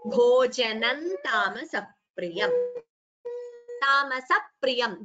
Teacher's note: Before pri, pa, there is a slight double sound. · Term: dvitvam